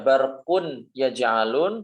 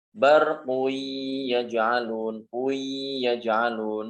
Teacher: Bukan dibaca barqun yaj'alun tetapi barqui yaj'alun, seakan jadi nunnya hilang, tanwinnya hilang dan ya-nya menjadi bertasydid.